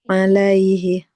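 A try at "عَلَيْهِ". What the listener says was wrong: Kalau mau berhenti jangan alaihi. Alaih. Coba diulang lagi Ibu.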